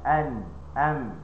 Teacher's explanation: ada dengun tapi tak sampai dua harakat. Dia hanya ada aslul ghunnah. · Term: gunah yang naqisah, gunnah yang nakisah